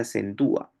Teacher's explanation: en acentúa tienes primero la vocal cerrada tónica y luego la vocal abierta, la A. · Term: tildación robúrica